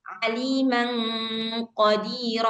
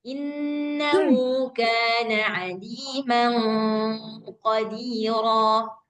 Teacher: Karena qafnya ini isti'la, maka hurufnya apa namanya bunyi gunnahnya pun harus tebal.